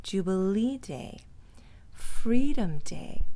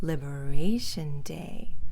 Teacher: not stressing day stressing the other word on the stressed syllable